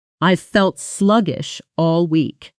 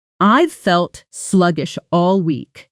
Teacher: Sluggish all often blends together, sounding closer to sluggish shall, with the sh sounds melting into one another.